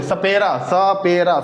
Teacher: सपेरा। स देखिए, जीभ सीधे दांत के पास आएगी, दांत और मसूड़े वाले हिस्से में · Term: दंत प्लस मसूड़ा